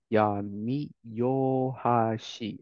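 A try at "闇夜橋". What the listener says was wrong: You're right with the yami. good guess here, but hashi tends to get rendaku when it's married. So it's actually yami yobashi.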